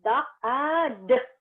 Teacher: And it's a voice tip-stop.